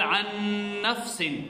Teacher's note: اس میں نون کے غننے کے ساتھ ادغام ہو رہا ہے